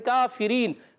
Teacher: काफ पर खड़ा ज़बर एक अलिफ खींच कर अदा करेंगे